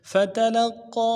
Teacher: فتلقى میں فا کو نرم سے ادا کرنا ہے، تا کو بھی نرم سے ادا کرنا ہے، لام کو قاف کے ساتھ ملانا ہے، قاف موٹا حرف ہے، تشدید ہے، غنہ بھی کر زور دیں گے، قاف کے اوپر کھڑا زبر ہے اور مد عارض ہے، ڈائل دال میں کھینچیں گے.